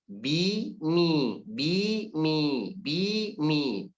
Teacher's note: Ba dan mim, dua-duanya berharakat kasrah. Dan dua-duanya keluar dari 2 bibir.